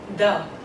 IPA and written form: ði (the)